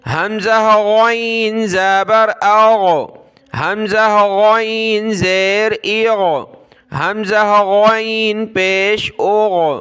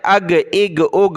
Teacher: غین کو گلے سے نکالنا ہے موٹا کر کے، اس کی جگہ آپ نے گاف نہیں پڑھنا بلکہ غین پڑھنا ہے